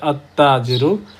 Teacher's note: আলিফ লামের লামটা উচ্চারিত না হয়, সরাসরি তাটা উচ্চারিত হচ্ছে আত্তাজিরু। যেহেতু আলিফ লামের লামটা উচ্চারিত হচ্ছে না, সে লাম তার সুকুনটা তাকে গিফট করেছে।